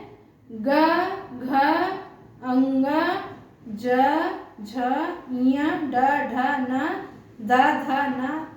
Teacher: जिन ध्वनियों के उच्चारण में स्वर तंत्रियों में कंपन होता है उन्हें सघोष कहा गया है